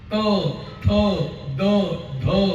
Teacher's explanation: जीभ दाताला लागल्याशिवाय अक्षर येणारच नाही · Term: दंत्य अक्षर